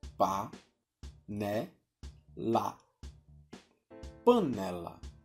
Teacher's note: Essa sílaba é chamada de sílaba tônica, porque quando a gente fala a palavra, ela sai com mais intensidade do que as outras. No caso de panela, a sílaba tônica é a segunda sílaba